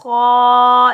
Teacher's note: خا کو بھی ہم موٹا پڑھیں گے کیونکہ خا بھی حروف مستعلا میں سے ہے تو خا کی آواز کھردری ہوتی ہے